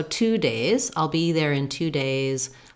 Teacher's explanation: And of course, days has the, I could also write it with the ZE. It has the A vowel and letter S says the Z sound.